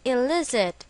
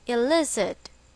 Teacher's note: with the stress on the second syllable